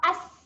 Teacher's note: Okay, yang kedua huruf sin, bunyi Hamzah nganga, sin sukun tadi, bunyi as. As. Okay, rasa angin keluar.